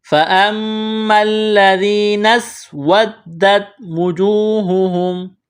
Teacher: نون کو سین کے ساتھ ملائیں گے